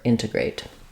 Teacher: first word integrate we will be stressing on that first syllable so my in syllable is long it has a clear vowel and then I'll have a schwa for letter E and A true clear vowel uh a diphthong for our final syllable eight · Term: long short short